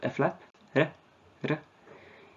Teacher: It does not occur word initially or finally, but only medially. There's one trill, r, which is often just a flap